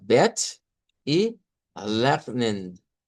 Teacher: estaríamos usando una e no redonda con un sonido corto